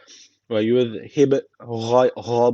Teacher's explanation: B harfi cezm almış burada kalkale tecvidi var hafif bir vurguluyoruz